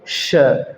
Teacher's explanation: झटके के साथ बोला जाता है, एकदम से ज़्यादा घर्षण और झटके का श